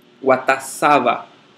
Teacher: ele tem o seu próprio acento no sa